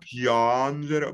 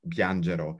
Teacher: I think the vowel is still bright. It's still a bright A